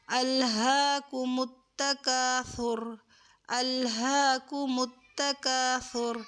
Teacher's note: سا کا مخرج اس کی جگہ سے ادا کریں گے، جب آپ کی زبان اوپر دانتوں سے ٹچ کر کے، اور اس پہ سیٹی کی آواز نہیں آئے گی